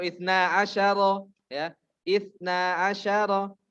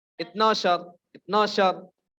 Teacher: Ainnya hilang, ya. Itnoshor. Pakai langsung shor, ya, bukan syar.